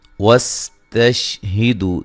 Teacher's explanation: سین کو باریک سیٹی سے ادا کرنا ہے. تش شین کو ہلانا نہیں ہے.